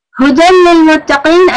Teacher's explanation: again ha from the bottom of your throat